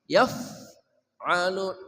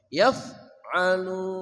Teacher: ain dari tengah kerongkongan, yaf'alun